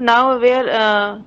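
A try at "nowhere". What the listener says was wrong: हां सिंगल ये किधर गया वो नाउ वेयर नहीं वो नो वेयर है ये नो है और ये वेयर नो वेयर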